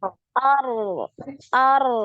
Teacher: Jadi ngalir suaranya ya. Takrirnya ar, sekali.